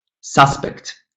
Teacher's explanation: if the word is a noun, suspect, then the stress falls on the first syllable. But if it's a verb, suspect, I suspect you, I suspect you, then the stress falls on the second syllable.